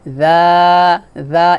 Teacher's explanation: শুধুমাত্র জিব্বার আগা উপরে দাঁতে লাগাবেন এবং পাতলা করে উচ্চারণ করবেন।